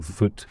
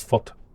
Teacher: the polite way of doing foot is to say it with the goose vowel, so foot. But the real old school vernacular way is to pronounce it with the strut vowel, so it's foot.